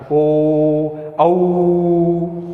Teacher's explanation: होठों का भी प्रयोग कर रहे हैं और कंठ से उसका उच्चारण हो रहा है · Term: कंठोष्ठ